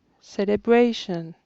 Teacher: C'est la troisième syllabe qui est accentuée.